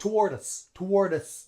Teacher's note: so notice how also the D in toward D links on to us